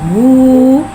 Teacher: हा के ऊपर उल्टे पेश को एक अलिफ यानी 2 हरकत के बराबर खींच के पढ़ेंगे और उल्टे पेश को होठों की गुलाई के साथ अदा करके पढ़ेंगे